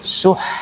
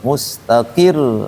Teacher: ditekan pada huruf yang bertasdidnya